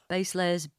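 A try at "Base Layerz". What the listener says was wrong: You're going to pronounce the Z on the end of base layers properly. It's base layers.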